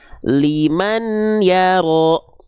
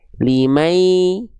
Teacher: Tapi kan di sini pakai hukum tajwid ya, maka dibacanya tidak liman yaro lagi teman-teman, tidak liman ya, tapi bunyian ini dileburkan ke huruf ya, limai ya, jadi udah nggak ada bunyiannya lagi. Nah, udah nggak ada bunyiannya lagi, tapi n-nya masuk ke ya-nya, limai. Nah, setelah masuk tadi bukan hanya lebur ya, idgham biguna itu leburnya harus dengan dengung.